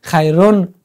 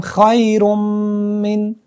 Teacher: خیرم ری را با میم وصل میکنیم. خیرون نمیگیم، میگیم خیرم من. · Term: ادغام